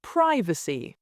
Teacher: American privacy with a long I